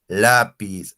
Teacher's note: zona de los alvéolos choca ya la l lápiz así profesor la punta de la lengua va a la zona de los alveolos